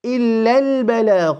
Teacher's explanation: Hamzatul Wasl will fall away because of the continuation